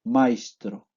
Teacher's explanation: la s se articulará como que fuera una s más una h